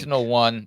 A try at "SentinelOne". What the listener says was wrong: You put the wrong emphasis on the wrong syllable,